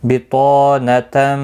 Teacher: بطانتم، طا الف مدہ ہے، 1 الف کی مقدار کے برابر کھینچ کر پڑھیں گے. طا حروف مستعلیہ میں سے ہے، پر پڑھنا ہے.